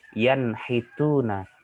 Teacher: Nun mati bertemu dengan ha. Di sini ada nun mati bertemu dengan huruf ha, maka cara membacanya harus jelas. Yanhituna, tidak boleh didengungkan. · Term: izhar